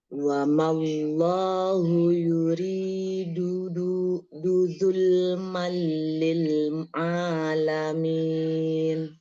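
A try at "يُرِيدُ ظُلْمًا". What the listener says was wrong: Kan dal dengan dho.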